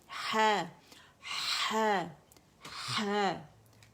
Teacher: ح کو زبان کی جڑ کو نیچے دبائیں، پیچھے سے ہوا کے ساتھ آواز ظاہر ہوگی، ٹھیک ہے. آئے گی جو لیرنگس میں آواز بنی ہوئی ہوا اس کو لے کر آ رہی ہے، ٹھیک ہے.